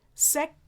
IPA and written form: sɛks (sex)